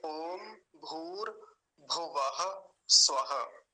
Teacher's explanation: भुवः में जो पीछे विसर्ग की आवाज है, आधे ह की जैसी आवाज आती है, वो उच्चारण कई बार नहीं आ पाता, उसको बोलना है।